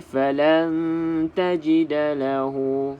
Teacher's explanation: Kalau dengung untuk ikhfa, dia adalah dengung yang samar-samar. Dia tidak terus masuk ke dalam huruf ta dan juga tidak jelas huruf nun ni. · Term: ikhfa hakiki